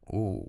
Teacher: that's a low pitch. It's falling, maybe a little breathy. That's disappointment or maybe realization.